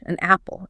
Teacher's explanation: When you put two vowel sounds back to back, your vocal cords have to abruptly stop and restart. Adding that N sound acts as a physical bridge, an apple. It just flows.